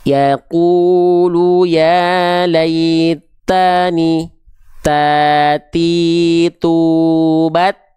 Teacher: ujung lidahnya melet keluar seperti digigit